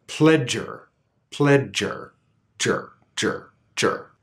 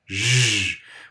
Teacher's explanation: the affricate sound has that stop, so there's that aspiration, that explosion of air